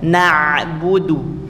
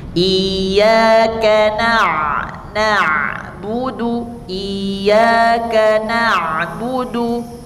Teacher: Jadi usahakan ain itu keluarnya dari tenggorokan karena dia huruf-huruf tenggorokan.